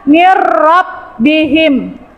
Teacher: idgham bila gunnah dibaca masuk dengan tidak dengung. Berarti dia masuk tanpa dengung, nak.